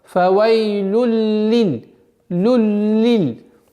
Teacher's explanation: Назализация без проявления, прошу прощения, ассимиляция без проявления назализации. То есть танвин уходит полностью в лям. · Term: идгам биля гунна